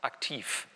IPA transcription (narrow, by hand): ʔakti:f